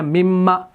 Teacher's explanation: من پلس ما, تو نون اس کے اندر مدغم ہو گیا تو یہ بن گیا مما, کیونکہ سوال کے لیے آیا ہے.